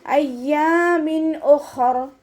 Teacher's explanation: ഹ ഇസ്തിഅലായുടെ ലെറ്ററാണ്, ഉയർത്തിയിട്ട് ഉച്ചരിക്കുക കേട്ടോ. നാവിൻ്റെ ബാക്ക് മുകളിലേക്ക് ഉയർത്തി കൊടുക്കുക.